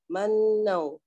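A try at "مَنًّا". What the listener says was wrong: Ya, tapi jangan sekejap sangat sebab dia nun sabdu. Dengung dia memang akmal gunnah kan. Manau. Lama kat situ.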